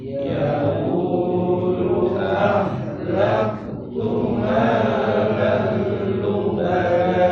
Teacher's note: lam ada tanwin fathah ketemu lam, idgham bila guna masuk tanpa dengung